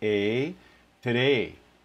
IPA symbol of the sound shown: e